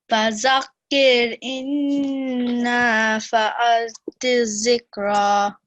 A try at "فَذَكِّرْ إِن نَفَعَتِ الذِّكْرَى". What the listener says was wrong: Okay, so here the same what I've been telling others as well, that this is not za, this is dhal.